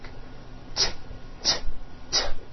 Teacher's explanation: make TTT is that voiced or unvoiced TTT it's unvoiced your vocal cords are not vibrating